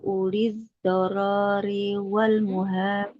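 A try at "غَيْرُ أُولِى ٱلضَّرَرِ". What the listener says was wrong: Ro-nya nggak panjang. Ghairu ulid dorori. Nah, jadi tidak ada ro-nya yang dibaca panjang karena tidak ada huruf matnya.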